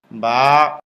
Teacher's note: স্বাভাবিক অবস্থায় মুখ যেমন ঠোট দুইটা মিলে থাকে মিলানো ঠোট খুলে দিলে হয়ে যায়